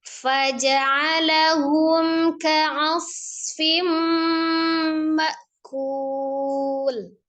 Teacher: Kul panjang, ada li sukun, tetapi pada saat memposisikan lam yang disukunkan karena waqaf, maka harus dikembalikan ke makhraj lamnya ujung sisi ya, tepi atau sisi yang dua dengan ujung bersentuhan dengan gusi atas